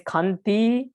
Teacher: Actually, there are only two syllables. Kang is a heavy syllable and ti is a light syllable.